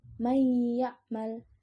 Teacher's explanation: Nunnya tidak jelas tetapi ada suara dengung gunnahnya. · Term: idgham bigunnah